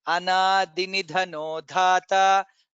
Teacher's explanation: I heard it as Anadhi. There is no Mahaprana there. It is Alpa Prana.